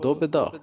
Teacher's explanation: ਬਾਬੇ ਦੀ ਸਿਹਾਰੀ ਪੋਲੀ ਜਿਹੀ ਬੋਲਣੀ